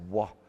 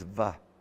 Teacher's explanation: the ancient or traditional pronunciation of the vav was a W sound